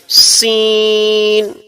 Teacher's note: जब भी हम सीन पढ़ेंगे तो उसमें सिटी की आवाज आनी चाहिए